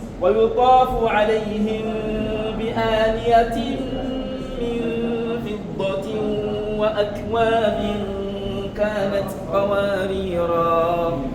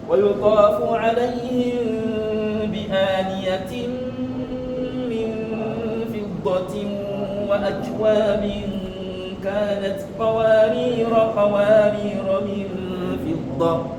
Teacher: lorsque tu t'arrêtes sur le premier qawarir, lorsque tu t'arrêtes dessus, tu prolonges. Mais lorsque tu passes, tu ne le prolonges pas.